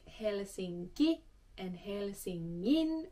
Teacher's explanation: Helsinki and Helsingin, where the K changes into a G. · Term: KPT rule